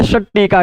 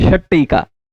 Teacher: ठीक, यही क्या होगा, अगर ता होता सत और टीका होता तो इस ता को वहीं से बोल जाएगा जहां से टा बोलना था, और ज्यादा दूर जीभ यात्रा नहीं करेगी, तात को दांत तक पहुंचेगी, जहां से टा बोलना षट टीका कर देगी, षट टीका, तब बोलने का आयास नहीं होगा।